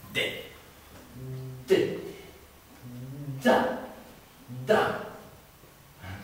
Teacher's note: la consonne d par exemple se prononce en donnant du bout de la langue audessus des dents du dessous